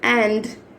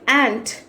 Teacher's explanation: if you are pronouncing d sound, your vocal cord should vibrate like and. If you are pronouncing the same word like ant, ఇప్పుడు చూడండి ant, vocal cord should not vibrate.